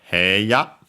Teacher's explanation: Nowadays usually pronounced as a long he, so long e. Some might still pronounce it as hey.